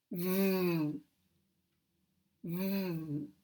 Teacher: to make a V, we have to use friction to make the sound. And we also use voice. V, V. We have a very closed position. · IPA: [v]